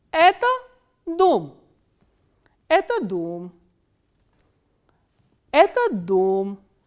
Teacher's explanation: the pitch normally falls towards the last stressed syllable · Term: intonation construction 1